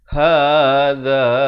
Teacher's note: Hadha, za di hujung lidah